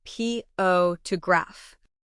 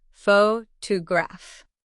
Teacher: Think of the word photograph. The stress is on the first syllable.